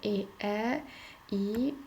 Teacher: Onlar da dilin ön hissəsinə, yəni dil önə doğru hərəkət etdiyi üçün biz onlara dil önü saitləri deyirik. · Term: Dilönü saitlərimiz